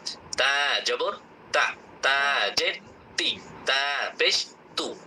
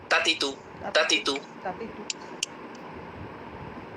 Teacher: জিহ্বার আগা, সামনের, উপরের বড় দুই দাঁতের গোড়ার সাথে লাগিয়ে একালিফ টান দিয়ে অক্ষরটি উচ্চারণ করতে হয়। তবে মজার ব্যাপার হলো অক্ষরটি উচ্চারণ করতে কোনো রকম কোনো প্যারা নেই, কোনো কষ্ট নেই, স্বাভাবিকভাবে ত আকার তা মুখ খুলে উচ্চারণ করলেই হয়ে যায়।